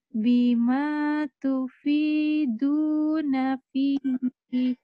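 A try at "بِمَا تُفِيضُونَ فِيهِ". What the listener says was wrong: Bukan fihi. Jika dihentikan, fih. Menjadi matarid lisukun.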